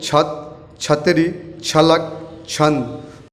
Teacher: छ का उच्चारण जुबान तालु से मिलकर अलग होते ही ध्वनि के साथ मुंह खुलने से इसका उच्चारण होता है।